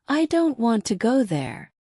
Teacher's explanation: the important words in this sentence are stressed are said strongly. Don't and go. Now, the smaller words like I, to there are said more softly or quickly.